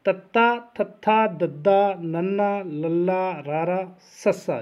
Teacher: ਦੰਤੀ ਜੀਭ ਦੀ ਨੋਕ ਉੱਪਰਲੇ ਦੰਦਾਂ ਨੂੰ ਛੂੰਹਦੀ ਹੈ ਜੀ।